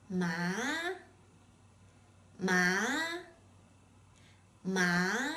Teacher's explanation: when you assign the second tone to the syllable ma is pronounced ma with a rising tone